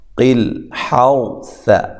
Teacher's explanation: لام کو ہلانا نہیں ہے، حا کو واضح نکالنا ہے، اور را کو موٹا کرنا ہے۔ را ساکن سے پہلے زبریہ پیش آ جائے، را کو موٹا کیا جاتا ہے۔